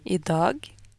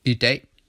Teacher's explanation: In Norwegian, the long A vowel is pronounced A, while in Danish it's pronounced E. And in Norwegian, the G is pronounced as G, while in Danish, a final G like this is silent, or an approximant that's almost silent, like a slight R sound.